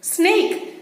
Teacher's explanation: teeth through over the tongue okay so snake is a slatter first letter of that particular word sounds voiceless